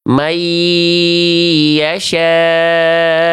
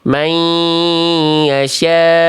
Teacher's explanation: Bacaan yang sekarang saya contohkan ini tanpa dengung, Bunda.